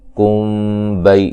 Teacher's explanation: ام، میم ساکن کا اظہار ہے، غنہ نہیں کریں گے، وا مد اصلی ہے، کم بئی یہاں میم ساکن کا اخفا ہے، غنہ کریں گے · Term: اخفاء شفوی